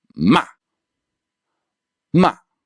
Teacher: starts slightly above first tone and then goes all the way down to third tone. So this is higher than first tone and then to your lowest point, your third tone level. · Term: assertive tone